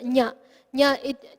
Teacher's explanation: So it's taking the sthana of the talavya, it's also taking the sthana of the nasika. So talu, nasika, nya.